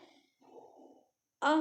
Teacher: विसर्ग भी स्वर के बाद आने वा वाला व्यंजन है जिसका उच्चारण ह की तरह होता है